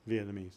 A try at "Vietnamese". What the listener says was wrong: Vietnamese. You're saying Vietnamese. You're forgetting the N. Vietnamese. Vietnamese.